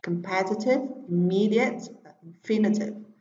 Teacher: trọng âm rơi vào tiết thứ hai